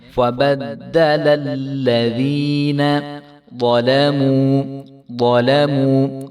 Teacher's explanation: ضا کو خوب موٹا کر کے پڑھیں گے، اور ضا اور لام کے اوپر زبر ہے تو اس کو ہم نے کھینچنا نہیں ہے.